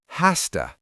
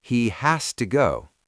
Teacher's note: in natural speech, the z sound at the end of has turns into a sharp s sound.